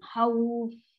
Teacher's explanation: Fa mesti gigi kita, gigi kapak ni letak pada bibir lembut. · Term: huruf fa